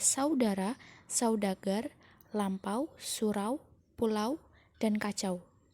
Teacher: diftong naik menutup mundur AU